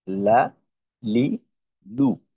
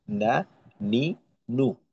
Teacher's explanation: লামের ক্ষেত্রে যতটুক জায়গা ব্যবহার করা হইতো, নুনের ক্ষেত্রে ওইটা একটু কম। আহ, তো নুনের উচ্চারণটা নুন জবর না, নুন জের নি, নুন পেশ নু, না, নি, নু।